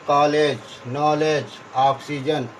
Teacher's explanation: यह अ तथा ओ के बीच का ध्वनि है।